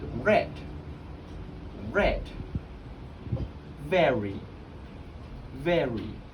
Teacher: the approximate which is where the tongue curls back slightly